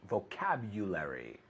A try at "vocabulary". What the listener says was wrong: No, porque la U, ahora bien la U, pero la B lo estás diciendo como V.